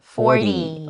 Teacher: even though there's a t we usually make a d sound